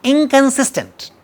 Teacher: The sound is ka, which is velar sound. the nasal must be a velar nasal.